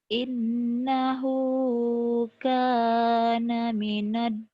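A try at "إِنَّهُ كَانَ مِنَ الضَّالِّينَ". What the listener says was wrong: bukan minad do. Do-nya bulat minad dolin. Do bukan da. Do. Bukan, dengerin. Innahu kana minadh dhalin. Sama seperti yang tadi ini. Sof. Tadi di sini kamu bisa. Di sini juga harus bisa.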